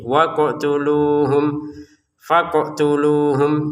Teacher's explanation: Faqtuluhum qof-nya jangan lupa dipantulkan ya.